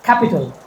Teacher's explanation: there is a kind of air that comes out of your mouth when you speak C. It is called aspiration.